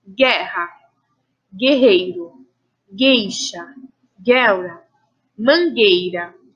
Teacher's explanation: percebam que, em todos esses casos, nós não pronunciamos o som da vogal U, ok?